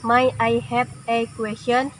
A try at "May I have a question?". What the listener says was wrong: Itu may ya nak, bukan my ya. May ya. May I have a question?